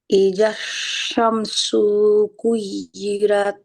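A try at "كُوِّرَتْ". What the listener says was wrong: না, কুই ই কেন হবে? তাহলে ইয়ার উচ্চারণ কি কু ভি। কু ভি। হ্যাঁ, কু পেশের পেশের পরে ওয়াসাকিন, পেশের পরে ওয়াসাকিনে কিন্তু এক আলিফ টানার কথা ছিল, তাই না? আমরা টানি না তাসদিদ থাকলে। কুবিরাত আমি কিন্তু টানি। কুবিরাত। ওয়াজের ভি,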